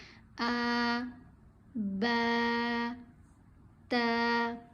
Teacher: آج ہم سیکھیں گے کھڑا زبر، کھڑا زیر اور کھڑا پیش کو کیسے پڑھتے ہیں۔ ان تینوں حروف کو حروف مدہ کی طرح ایک الف کے برابر لمبا کھینچ کر پڑھا جاتا ہے۔